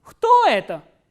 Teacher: the pitch goes up on the interrogative word and then it comes down towards the end.